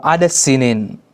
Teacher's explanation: Dalam riwayat ini hukum bacaannya juga idgham, maka mereka membaca adas sinin. Adas sinin, bukan adadasi.